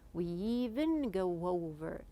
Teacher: You can see that there is like a Y sound or a W sound while you are speaking.